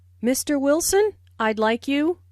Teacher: notice the rising intonation on Mr Wilson which is used to address someone listen for the D in I'd like this means I would